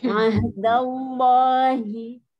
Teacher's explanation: enggak pakai gerakan bibir, lamnya ada lam jalalah